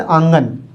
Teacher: इसका उच्चारण करते समय नाक और मुंह दोनों से ही हवा निकलती है, इसको कहा जाता है अनुनासिक।